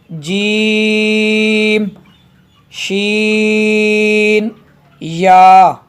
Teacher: जीम शीन या ये हरूफ शजरिया है, ज़बान के दरमियान और तालों के दरमियान से अदा होते हैं